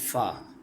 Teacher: ऊपर के अगले दोनों दांतों की नोक जब नीचे के होठ के अंदर वाले हिस्से से लगे तो फ अदा होता है